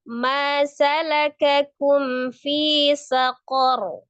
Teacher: Kemudian fi itu dibaca mad tabi'i ya 2 harakat. Saqar ro-nya dibaca tebal dan disukunkan karena waqaf ro fathah. Sebelumnya adalah fathah, ro-nya dibaca tebal ya, tidak panjang.